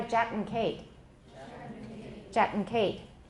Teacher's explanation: if it comes between two velar sounds, it may become a syllabic velar nasal.